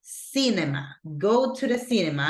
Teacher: Remember that the stress goes in the first syllable